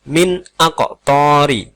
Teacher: Dalam lafaz tersebut terdapat nun sukun yang bertemu dengan alif. Maka nun sukun tadi harus dibaca dengan jelas. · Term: idhar